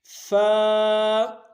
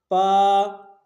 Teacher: حرف فا کا بیان، حرف فا کا مخرج، ادائیگی کا طریقہ اور غلط ادائیگی سے بچنا. حرف فا کا مخرج اوپر کے اگلے دونوں دانتوں کی نوک، جو اوپر کے جو دو دانت ہیں ان کی نوک جب نیچے کے ہونٹ کے اندر کا حصہ وہاں سے لگے تو یہ حرف ادا ہوگا فا. عموماً اس کی ادائیگی میں سب سے بڑی غلطی یہ ہوتی ہے کہ ہونٹوں کو اوپر کے نیچے ہونٹوں کو پورا ملایا جاتا ہے، جس سے ایک نیا ورڈ بن جاتا ہے جو عربی میں مستعمل نہیں ہے.